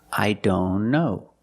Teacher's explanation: I don't know if you link the sounds I don't know link the N with the other N